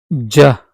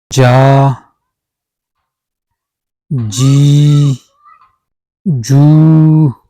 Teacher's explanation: the middle, front of the tongue touches the area between the alveolar ridge and the hard palate and block the air and then release it with a slight explosion and friction making. Ja. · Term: palato-alveolar affricate